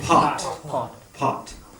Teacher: That P sound is a P-H sound. Pot. Put your hand in front of your mouth. You'll feel it.